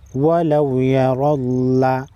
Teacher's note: واو زبر وا یا، لام واو زبر لو، ولو، یا زبر یا، را لام زبر رل، لام زبر لا، ولو یرلا، را پر زبر ہے، را کو موٹا پڑھیں گے۔